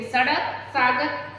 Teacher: जीभ वहां ऊपर, सबसे ऊपर जाती, यानी सड़क बोलते हुए आपकी जीभ नीचे वाले दांतों को स्पर्श करती हुई है, वो का ध्वनि निकालती है।